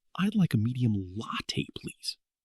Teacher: "I'd like a medium latte, please." Did you hear how my voice jumped on the word latte